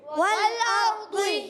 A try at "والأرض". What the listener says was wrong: والارضی۔ ایسے لگتا ہے، ایسا محسوس ہوتا ہے جیسے دال کو ہلکا سا موٹا پڑا جا رہا ہے، ٹھیک ہے، مگر دال کے مخرج سے نہیں ہوتا، اس کا اپنا ایک ساؤنڈ ہوتا ہے، ٹھیک